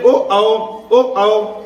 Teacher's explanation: हमारे कंठ से भी आवाज आ रही है और हमारा होठ भी टच हो रहा है, इसलिए इसका उच्चारण स्थान कंठ और ओष्ठ दोनों साथ में होगा।